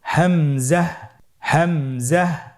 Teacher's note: হামজা হরফটি উচ্চারণের ক্ষেত্রেও বারিক করে উচ্চারণ করতে হবে এবং এখানে টেনে পড়া যাবে না দ্রুত পড়তে হবে